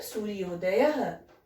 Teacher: अब यहाँ पर आ के बाद उ है तो उ का ओ में परिवर्तित होगा